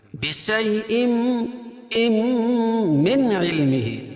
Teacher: اظہار حلقی، کیونکہ نون ساکن کے بعد حروف حلقی کے 6 حرفوں میں سے عین ہے تو یہاں اظہار کریں گے، ظاہر کر کے پڑھیں گے · اس کے بعد تنوین کے بعد قاعدہ ہے کہ نون ساکن یا تنوین کے بعد ادغام مع الغنہ کے 4 حرفوں میں سے کوئی بھی حرف آئے تو وہاں غنہ کر کے پڑھیں گے. اور یہاں تنوین کے بعد میم آ رہی ہے تو یہاں غنہ کر کے پڑھیں گے. بشیء من علمه.